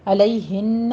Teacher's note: علیہن میں یا نین ہے اور نون مشدد ہے، غنہ واجبہ ادا کریں گے